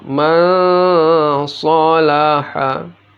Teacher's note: Nun mati atau tanwin bila bertemu huruf sad, sa si su, maka dibaca samar nun matinya dan didengungkan.